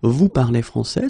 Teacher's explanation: So, of course, l'Académie Française would like me to put them in the other order, but basically you will hear many French people and many French-speaking people just keep the same order and raise their voice at the end